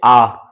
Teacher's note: जिन स्वरों का उच्चारण करते समय मुख सबसे अधिक या ज़्यादा खुलता है। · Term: विब्रत स्वर